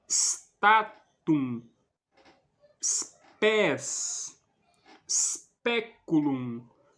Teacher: Não se pronuncia estatum, como se fosse um E no início da palavra. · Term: S impuro